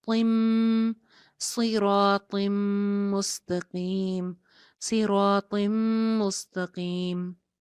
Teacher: اس کے بعد صراط مستقیم، لاسٹ میں اسی آیت کے لاسٹ میں طا کے نیچے تنوین ہے اور تنوین کے بعد نیکسٹ لیٹر جو ہے وہ میم ہے، یرملون میں سے میم ہے، تو یہاں پہ بھی کیا ہو رہا ہے، طا کی ایک زیر کو میم کے ساتھ جوڑا جا رہا ہے، نون کی آواز ختم ہو جائے گی